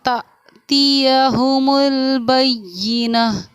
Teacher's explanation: حمزہ ساکنہ کے پڑھنے میں جھٹکا ہوتا ہے، اس لیے میں نے اس کو پڑھا تَأْتِيَهُمُ الْبَيِّنَةُ، تو اس جھٹکے کا آپ کو بہت خاص دھیان رکھنا ہے.